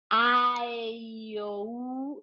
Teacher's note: va de lo más abierto a lo más cerrado. A, E, I, O, U, cerramos nuestra boquita.